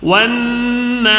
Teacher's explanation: ون میں نون میں غنہ کرنا ہے، ایک الف کھینچ کر بھی پڑھنا ہے کیونکہ الف سے پہلے زبر آیا